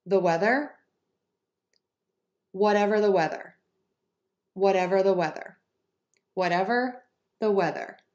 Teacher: can hear my pitch going up a little bit on the second word in each